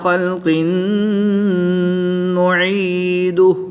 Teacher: دو زیر کی تنوین کے بعد نون حروف یرملون میں سے ہے تو یہاں پر ادغام مع الغنہ ہوگا، غنہ کر کے پڑھیں گے